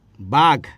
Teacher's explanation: গ টা হচ্ছে ঘোষ ধ্বনি কিন্তু উচ্চারিত ক হচ্ছে অঘোষ ধ্বনি · এখানে গ আছে, কিন্তু গ উচ্চারিত হচ্ছে কি কর মতো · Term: অঘোষীভবন, অঘোষী ভবন